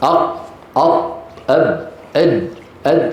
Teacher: قطب جد كلها شديده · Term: قلقلت